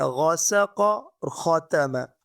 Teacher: یہ غاسق اور خاتمہ، یہ ہمارے پاس ٹاپ آف دا تھروٹ ادنی حلق سے ادا ہوتے ہیں